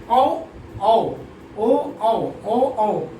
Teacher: ये कंठोष्ठ हो जाएगा, यानी इसका औ औ ओ औ ओ औ, तो ये कंठ से भी होते हैं और ओष्ठ से भी इसका उच्चारण किया जाता है